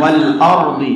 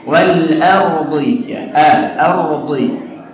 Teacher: A-nya hati-hati jangan sampai tebal